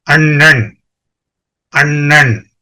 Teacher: நீங்க மூணு சுழி எங் சொல்லும்போது அதே நுனி நாக்கு அப்படியே சென்டருக்கு வந்த நாக்கே வந்து சென்டருக்கு வந்துரும் . வந்துட்டு அது நுனி நாக்கு மேல் அண்ணம் அந்த மேல் எண்ணத்துல நடுவுல